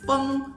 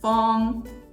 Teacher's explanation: sometimes the eng ending turns into an ong ending. So feng will turn into fong.